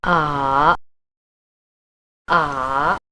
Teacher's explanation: the main pronunciation is a dipping tone that starts in the lower third of your vocal register moves deeper and then rises to a medium-high level like this it's a little like a rolling slightly uncertain yes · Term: third tone